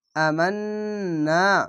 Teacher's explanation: এখানে ওয়াজিব গুন্না, গুনগুন করে আওয়াজ হবে